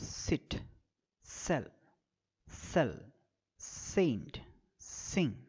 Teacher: the articulating organs are the alveolar Ridge and the tip of the tongue so it's an alveolar the manner of articulation fricative and in · the air can escape through the gap without vibrating the occal cords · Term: voiceless